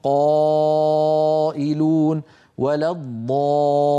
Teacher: يصطدم الصوت بقبه الحنك ويعود وله رنين يملا الفم هذا الرنين يسميه العلماء التفخيم